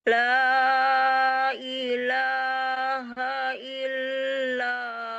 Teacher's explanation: Panjang la, panjang hu ya.